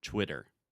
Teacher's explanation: So the first sound, you're actually still making that CH, the ch, when I say chwi, but I'm adding the W sound at the end. So I'm making a circle with my mouth and saying Twitter.